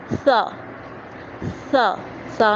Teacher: سا، سا، سا میں سیٹی نہیں نکالنی